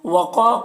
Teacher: قاف حروف مستعلیہ میں سے ہے اور الف مدہ ہے